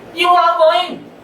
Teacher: आर ना बोलते हैं, नहीं बोलते, फ्लो में निकल गया।